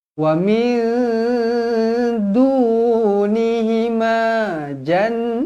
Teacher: Nun kosong bertemu dengan Dal ikhfa Hakiki dengung dua harakat waminunihima jannatan Nun yang bertanda sabdu wajibul ghunnah dengung dua harakat · nun kosong bertemu dengan dal, ikhfa hakiki, dengung 2 harakat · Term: wajibul gunnah